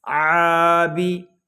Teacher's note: عین حلق کے درمیان والے حصے سے ادا ہوگا